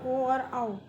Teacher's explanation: अब है कंठोष्ठ। कंठोष्ठ, जिन वर्णों का उच्चारण कंठ और ओष्ठ की सहायता से होता है